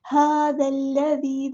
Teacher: دال کو ہم نے لام کے ساتھ ملا دینا ہے، حمزہ الوصل ہمارا ڈراپ ہو جائے گا. ھذا الذی، دال کو باری کو نرمی سے ادا کرنا ہے، یا مد آ گیا تو الف کے برابر لمبا کرنا ہے.